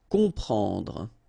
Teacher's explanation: You've got OM, and after that you've got a consonant, so you will get the sound on, nasal. Okay, you don't hear any M here. Okay, it's on.